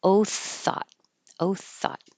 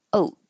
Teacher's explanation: If you don't have airflow, oath will sound like oat with a T.